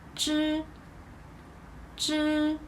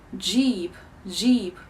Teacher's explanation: when you pronounce the Chinese 知, you don't use your vocal cords. You can put your hands here on it and feel does it tremble.